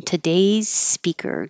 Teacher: just keep your s going today's speaker don't make the z on today's today's speaker 11 has a lot of l's this was for